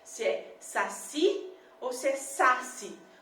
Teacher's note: A sílaba tônica mais forte é o si, certo?